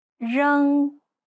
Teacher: e e e e When paired with the following, the E changes. 扔 It's similar to the O sound in the word boring, but with unrounded lips. You'll find that when you start unrounding your lips, it'll start to change to more of a U sound.